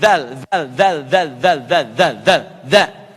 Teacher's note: Za harfun lithawi, lithawi. Lidahnya digigit sedikit.